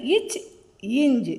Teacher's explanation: அது மாதிரி இச் இஞ் இது இரண்டு எழுத்துக்களும் இடைனா நடு அண்ணத்தை தொடுவதால் பிறக்கின்றது